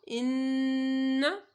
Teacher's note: نون پہ ناک میں آواز جائے گی، نون میں شدت ہے تو نون میں شدت کے اوپر ہم نے غنہ کرنا ہے۔